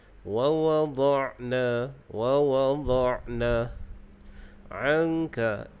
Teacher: Dalam ayat ini kita perhatikan pada sebutan huruf Ain. Huruf Ain ini makhrajnya di tengah kerongkong. Jadi pastikan bunyi Ain itu keluarnya di tengah kerongkong.